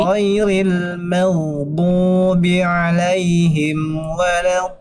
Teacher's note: Mimnya tipis, goinnya tebal dan mengalir suaranya, ya, pada kalimat maghdubi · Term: goin sukun